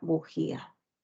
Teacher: la palabra bujía la mayor fuerza de voz está en la i